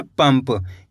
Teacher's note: पहले वाले अक्षर में अनुस्वार की मात्रा लगी हुई है, तो अपन इसको आधा माँ पढ़ देंगे।